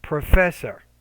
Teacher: professor needs to be stressed the second syllable. Make that that second syllable clearer, louder, longer, and higher pitch. So professor.